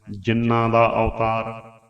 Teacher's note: ਨੰਨੇ ਦੇ ਪੈਰ ਦੇ ਵਿੱਚ ਹਾਹਾ ਨਹੀਂ ਲੱਗਣ ਦੇਣਾ, ਜ਼ਬਾਨ ਨੂੰ ਰੋਕ ਕੇ ਬੋਲਣਾ ਹੈ, ਜਿੰਨਾਂ ਦਾ ਅਵਤਾਰ।